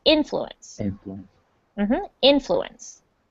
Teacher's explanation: the emphasis is on the first syllable